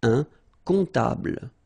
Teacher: Un comptable, so OM, remember, it goes like on, all right? And then, strangely, this P is not pronounced.